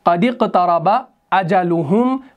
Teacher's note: باب افتعال کا جو شروع والا حمزہ ہوتا ہے یہ حمزۃ الوصل کہلاتا ہے, تو وصل کی صورت میں ہم اس کو ڈراپ کر دیتے ہیں